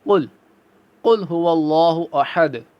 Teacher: دو نقطوں والا کاف ہم کیسے پڑھنا چاہیے؟ ہمیں پر پڑھنا چاہیے